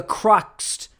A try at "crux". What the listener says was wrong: It's pronounced crux. No T at the end.